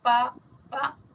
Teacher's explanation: Cuando digo bilabial, como pa, son los dos labios.